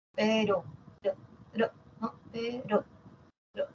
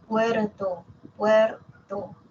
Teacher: la vibrante simple que es como un solo tap como un solo golpe